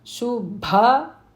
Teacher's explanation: Shubha, that Bha is Mahaprana.